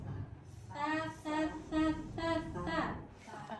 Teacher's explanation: Saya salahnya terus yang masuk itu susah. Ta itu keluarnya huruf dari ujung lidah menempel pada ujung gigi seri atas. Ta.